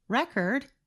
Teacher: For example, the word spelled R-E-C-O-R-D can be thought of as 2 words. When we stress the first part of the word, record, it is a noun.